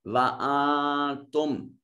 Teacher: कैसे अदा करेंगे कि जुबान की नोक को ऊपर वाले तालू के साथ लगाएंगे, दांतों से नहीं, तालू के साथ लगाएंगे तो ये नून इख्फा अदा होगा। जैसे वा आवाज नाक में चली जाती है, वा तुम, और जब नून को जाहिर पढ़ना हो तो फिर जुबान की नोक सामने वाले जो सनाया उरिया दांत हैं उनकी जड़ में लगती है।